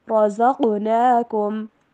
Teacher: را کو موٹا پڑھیں گے, زا کی آواز کلیئر ہونی چاہیے اور قاف کے اوپر کلکلا بھی